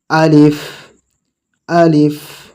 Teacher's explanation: একটু হা বের হবে মুখ থেকে